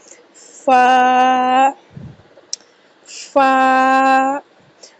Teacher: فا حروف شفویہ میں سے ہے۔ ایسے حروف جو ہونٹوں سے ادا کیے جاتے ہیں حروف شفویہ · فا اوپر کے دانتوں کا کنارہ اور نیچے والے ہونٹ کے تار حصے سے ادا ہوگا۔ فا کا مخرج اوپر کے دانتوں کا کنارہ اور نیچے والے ہونٹ کے تار حصے سے۔ · نیچے والا ہونٹ جو اس کا اندر والی سائڈ ہے گیلا حصہ ہے، اس سے جو ہے فا کا مخرج ادا کیا جائے گا